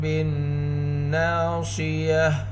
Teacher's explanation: نون مشددہ ہے، نون کے اوپر گنہ کریں گے، ساتھ الف مدہ، نون کی آواز کو دو حرکت کے برابر کھینچ کر پڑھیں گے